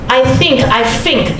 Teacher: use F to replace TH sound. It's a very typical Hong Kong accent. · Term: dental fricative TH